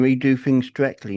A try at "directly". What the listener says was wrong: No I. No I in there. Just directly.